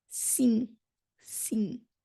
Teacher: we don't actually close our lips when we end with an M? We say it almost as if it was an N.